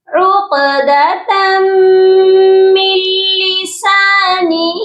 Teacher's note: تنوین کو ہم نے میم مشدد کے ساتھ ملا کر غنہ کر کے پڑھنا ہے